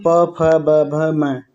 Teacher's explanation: प वर्ग का उच्चारण स्थान की बात करें तो ओष्ठ है